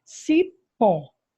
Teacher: cipó a sílaba tônica é o pó